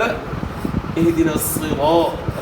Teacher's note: را کے اوپر زبر ہے, را کو موٹا ادا کرنا ہے. اور اس کے بعد آپ دیکھ رہے ہیں کہ الف ہے, را کے بعد الف بھی ہے.